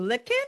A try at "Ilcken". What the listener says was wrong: Il- Ilcken. No, not lick. It's just an I, but it seems like an L.